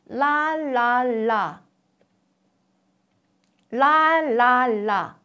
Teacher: the air flow from the mouth moves out laterally on both sides of the tongue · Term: lateralization, Lateralization